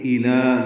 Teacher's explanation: حمزہ اقصی حلق سے جلدی پڑھیں گے، واضح کر کے ، الہ، لام کو 2 حرکات لمبا کرنا ہے، باریک پڑھنا · لام کو 2 حرکات لمبا کرنا ہے، باریک پڑھنا ہے